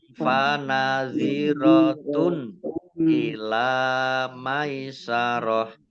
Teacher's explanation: Domah tanwin bertemu dengan huruf alif, bacaan izhar dibaca jelas.